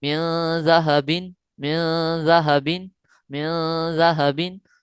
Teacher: ناک کے بانسے میں آواز کو چھپا لینا ہے، ٹھیک ہے، نون ساکن کی آواز کو ناک کے بانسے میں چھپا لینا ہے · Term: غنہ